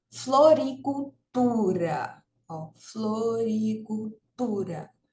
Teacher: vejam que aqui a sílaba tônica né Ou seja a sílaba mais forte é o tu